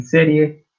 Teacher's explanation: el acento pronunciado lo hacemos en la primera E, de C, y por lo tanto la I con la E últimas funcionan completamente como diptongo.